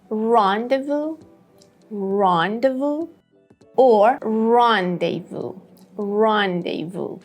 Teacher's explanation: the first syllable has the main stress, so say it in a more clear way.